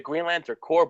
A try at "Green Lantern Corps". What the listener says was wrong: The P is silent. Say Marine Corps. It's Marine Corps. I understand, but like you would never say Marine Corps because that means a dead Marine. Green Lantern Corps. And that's plural and singular.